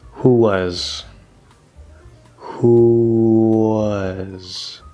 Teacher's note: the end of oo is very close to that W, and we can just make a slightly longer W.